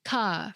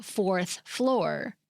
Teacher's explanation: He was able to get them to say the phrase fourth floor with its double R sounds because he wanted to find out whether social class determined who used local New York accent features such as dropping the R in words like well New York ca for car or pac for park.